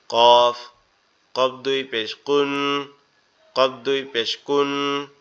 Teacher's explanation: কফ হচ্ছে আমাদের জিহ্বার গোড়া থেকে একটু আগে বাড়ায়া উপরের তালুর সঙ্গে লাগবে